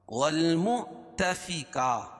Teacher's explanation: یہاں واو لکھی اس کے اوپر حمزہ اور جزم ہے تو یہاں جھٹکا ہوگا · الف سے پہلے کھڑا زبر قائم مقام الف مدہ کہ اس کو ایک الف کے برابر کھینچ کے پڑھیں گے۔